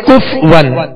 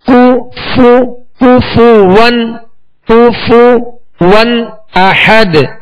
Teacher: تو بعض لوگ پڑھتے ہیں کف ون، تو کف ون نہیں، کاف پر پیش ہے، فا پر پیش ہے، دونوں کے پیش یہ صحیح سے ادا کریں گے، ہونٹوں کو گول بھی کریں گے اور بغیر کھینچے بغیر جھٹکا دیے معروف ادا کریں گے.